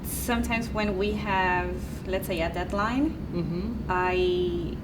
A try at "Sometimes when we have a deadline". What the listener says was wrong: Sometimes when we have a deadline, you can use more intonation on that word.